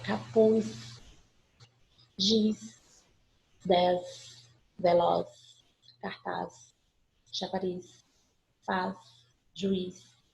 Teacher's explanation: Eu não pronuncio um Z, eu pronuncio o som de S mesmo.